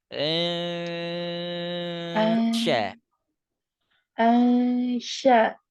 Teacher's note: Makhraj huruf shin tengah lidah ke langit-langit.